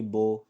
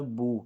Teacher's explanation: ہم نے اس کو پڑھنا ہے بو، دونوں ہونٹوں کو گول کر کے